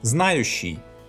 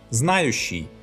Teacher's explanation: Here the щ is short because none of the vowels that surround this sound are stressed.